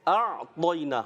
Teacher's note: اعطینا، حمزہ اور عین اور خوبصورت طریقے سے ادا کریں. حمزہ کو اور عین کو اور کلیئر کریں، طا کو پر کریں